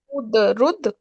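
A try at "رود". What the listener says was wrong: हाँ हाँ, रूद, रुद नहीं, रूद।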